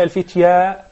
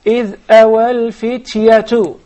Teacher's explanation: there is just mere zabar or fatha on top of the ya, so you do not prolong it. You don't say al-fitya, rather you say إِذْ أَوَى الْفِتْيَةُ right away, okay?